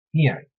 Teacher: the name Ian, which is the Gaelic for John, begins with a vowel sound. And so there is no lenition